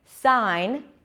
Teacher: So here as well, we don't hear the G sound. In the word sign, again, it's the I as in my, sign, we don't hear the G sound. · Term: I sound